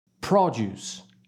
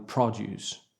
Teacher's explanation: spelling is exactly the same as the verb to produce however the pronunciation is different because the stressing is on the first not the second syllable